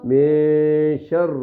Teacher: نون کی آواز کو ہلکا سا ناک میں چھپائیں گے 1 سیکنڈ کے برابر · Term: اخفا